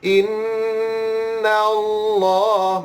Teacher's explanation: Lam yang kedua tu lam tebal.